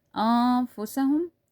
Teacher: We're going to be taking the voice of the noon into the nose. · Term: ikhfa